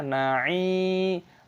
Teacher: ainnya panjang dengan ya sukun, mad thabi'i. Perpanjang dua ketukan